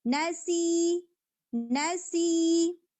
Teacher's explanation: سی کو پھر 2 حرکہ کھینچ دیں گے